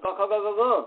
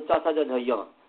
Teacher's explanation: परंतु एक कंठ वर्ण है एक तालव्य वर्ण है, इसलिए परस्पर सवर्ण नहीं हुए, क्योंकि कहा कि तालवादी स्थान और आभ्यंतर प्रयत्न दोनों तुल्य होना चाहिए।